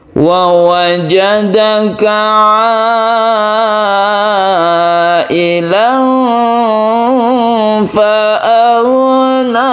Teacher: Nah, agak tinggi sedikit yang belakangnya, itu tidak masalah.